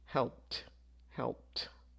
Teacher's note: The final sound here is a D, so we would say provided. Here, the final sound is a P, so we would pronounce this as a T